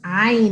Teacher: So it's not ah, it's ayn. It has to come from the very back of your throat.